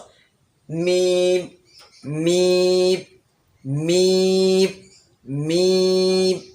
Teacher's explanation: মিম হচ্ছে ঠোঁটের শুকনা অংশ থেকে বাইরের অংশ।